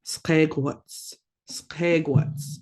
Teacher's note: You got a G raised W. You're going to be blowing out when you're making that sound.